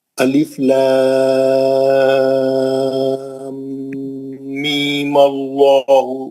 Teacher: غنہ کر کے می پڑھنا ہے